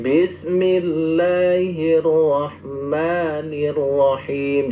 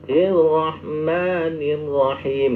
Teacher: ro itu walaupun bertasdid itu juga harus ada getarannya